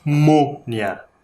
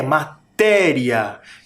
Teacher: Um acento é nasal, parece que sai pelo nariz o som. Mônia. O outro é agudo, ele sai pela boca bem forte. É matéria. Percebem essa diferença?